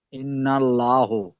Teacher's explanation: নুনের উপরে তাজদিদ এসেছে, নুন তাজদিদ গুন্না করা ওয়াজিব। নুন তাজদিদকে এক আলিফ পরিমাণ গুন্না করে পড়ব।